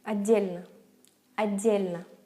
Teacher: And we don't say t, d. We say just like a long D, long D.